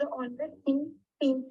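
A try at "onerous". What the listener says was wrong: ऑनरस नहीं होता, ओनरस होता है.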